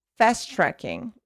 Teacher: Here, TT, fast-tracking, not fast-tracking, fast-tracking. 1 T, you are connecting these two sounds together